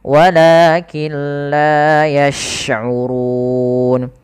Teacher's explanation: Apabila ada nun sukun bertemu dengan lam, maka cara membacanya kita idghamkan nunnya kepada huruf lam, sehingga di situ tidak dikasih harokat, artinya nunnya tidak dibaca, langsung ke lam yang berharokat tasydid